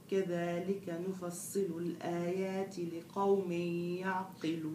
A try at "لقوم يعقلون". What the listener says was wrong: برضو القاف بتنحك عندك انتبه نفصل الآيات لقوم شايف القاف